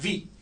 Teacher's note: इसमें lower lip और अपर teeth use करें